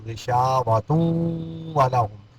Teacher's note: ابصارہم، با میں قلقلہ ہوگا، ابصارہم غشاوہ، یہاں وقف کریں گے تو غشاوہ، اگر وقف نہیں کریں گے تو غشاوۃ ولہم، نون تنوین کے بعد حروف یرمنون میں سے یہاں کیا آ گیا، واو آ گیا، یہ ادغام مال غنہ